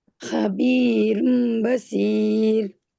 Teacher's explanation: தன்வீன்ல உள்ள ன் நூன் எடுத்துட்டு நூனுக்கு பதிலா மீம் சேர்த்து ஓதணும்